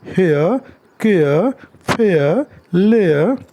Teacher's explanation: ए से अ पर ग्लाइडिंग हो रही है